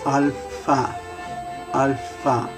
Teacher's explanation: And instead of the ph, instead of having the sound of a strict F, where we put our lower lip with our upper teeth, alpha, you would actually blow through your lips